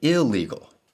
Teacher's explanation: the N of the N prefix has become L. It has assimilated to the L of legal. This is the assimilation of N in English.